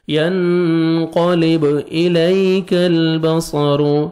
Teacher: یا لین ہے، نرمی سے ادا کریں گے، کاف کو باریک پڑھیں گے، لام کو ہم نے ہلانا نہیں ہے.